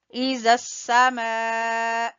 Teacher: زال کو آپ نے نرمی سے زبان کی نوک اور اوپر والے سامنے والے دو دانتوں کے سرے سے آپ نے زال ادا کرنا ہے